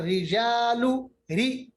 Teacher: और रिजालू, री, देखिए रू नहीं पढ़ा हमने, री बिल्कुल हमने होंठों को गोल नहीं किया, बिल्कुल खाली किया, मोटा नहीं किया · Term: बारीक